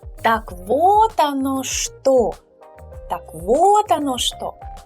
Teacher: Please bear in mind that here we put emphasis on вот and on что.